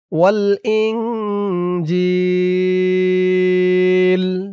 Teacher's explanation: ইকফা গুন্নাহ নুন সাকিনের পরে ইকফার হরফ জিম আসছে